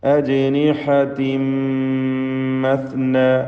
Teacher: തൻവീനിനെ പൂർണ്ണമായും മീമിലേക്ക് ലയിപ്പിച്ച് മണിക്കണം. ഇദ്ഗാം ബിഗുന്ന കാമിൽ.